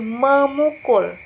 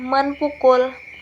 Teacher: Bunyi P pada kata pukul itu berubah menjadi bunyi M, sehingga menjadi memukul, bukan menpukul.